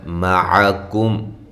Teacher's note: عین کو واضح نکالیں، کم کاف بریک، میم ساکن پہ اظہار